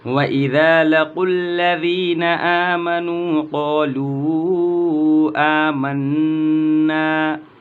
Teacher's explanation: مد منفصل 2 سے 4 الف کے برابر کھینچ کر کے پڑھیں گے